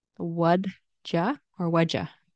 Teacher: What did you? What did you? Turns into what'ja.